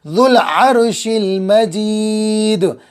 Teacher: ذو العرش المجید، عین صاف حلق کے بیچ والے حصے سے، ذال زبان کے نوک اور اوپر کے دانتوں کا کنارہ، شین زبان کا بیچ اور اوپر کا تالو، یہ مخرج جیم کا بھی ہے۔